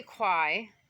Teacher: AI is a diphthong, and so why some people say kwai is because they're saying the sound like the I in wine